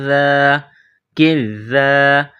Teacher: زبان کا سرہ تھوڑا باہر نکالیں گے، ذال کو نرم پڑھیں گے۔ ذال کے اوپر 3 دندانے والی چیز تشدید ہے، ذال مشدد ہے، تو کاف اور ذال کو آپس میں ملائیں گے تشدید کی وجہ سے۔